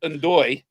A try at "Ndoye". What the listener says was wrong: You don't pronounce the N. Doy.